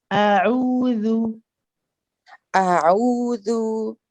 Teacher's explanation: I want a little bit more of a squeeze for your ayn at the beginning.